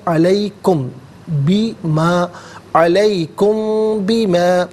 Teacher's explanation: میم ساکن کے بعد بما میں با آ رہا ہے تو میم ساکن کو غننے کے ساتھ پڑھیں گے